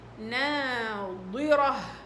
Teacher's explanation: والراء مفخمة والها مرققة